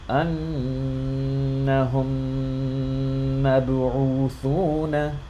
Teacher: I'm merging these two Meems, and I'm holding the sound in my nose, or sorry, in my mouth a little bit. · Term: Idghaam